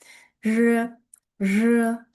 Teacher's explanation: Ya'ni R bilan J tovushini qo'shib olib talaffuz qilishingiz kerak bo'ladi.